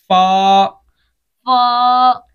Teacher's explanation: ऊपर के दांतों के किनारे और निचले होंठ के तर हिस्से से अदा होता है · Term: हरूफ शफाविया